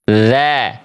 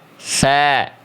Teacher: Kalau dzal tertahan nafas, kalau tha mengalir nafas.